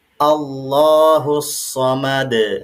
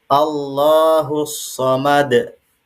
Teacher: tidak boleh ada suara hamzah sukun di bagian akhirnya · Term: memantulkan